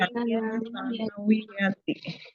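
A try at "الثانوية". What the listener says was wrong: Perhatikan bukan sanawiyati. Sa-nya yang panjang. Sanawiyati. Sa-nya yang matobi'i, panjang, ya.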